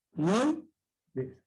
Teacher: Al centro la vocal abierta O. Y a los costados, cerrados. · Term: triptongo